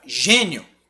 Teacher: eu vou ter primeiro uma semivogal e depois a vogal eu vou ter o fraquinho depois o forte ele vai crescer